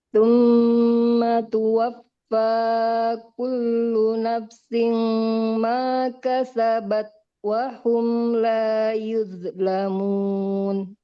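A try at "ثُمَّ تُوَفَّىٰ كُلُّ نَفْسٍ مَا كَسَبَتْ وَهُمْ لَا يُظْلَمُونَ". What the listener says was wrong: Kullu nafsim. Ini juga sama. Fa-nya alirkan dulu dengan sempurna. Kullu nafsim ma kasabat wa hum la yuzlamun. Nafsi. Nafsin.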